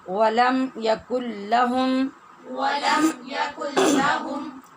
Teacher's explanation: ولم میں جو آپ نے دیکھا میم ساکن ہے، اس پر بھی اظہار ہوتا ہے